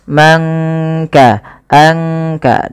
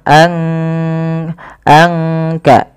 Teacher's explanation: tidak kita baca man kasaba, tapi disamarkan suara nunnya kepada huruf kaf. Manka anka langsung kepada makhraj daripada huruf kaf itu sendiri. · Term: ikhfa